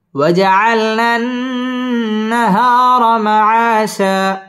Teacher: ওয়াও ঠোঁট গোল করে উচ্চারণ করতে হবে